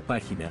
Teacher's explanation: la sílaba tónica es la antepenúltima por lo que se coloca una tilde en la regla 4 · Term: palabras esdrújulas